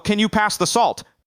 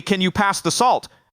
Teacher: When you go down, it sounds like you're making a firm statement.